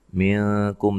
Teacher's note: نون ساکن کا یہاں اخفا مع الغنہ ہے، باریک اخفا ہے ، کاف کو باریک پڑھنا ہے، میم ساکن کا یہاں اظہار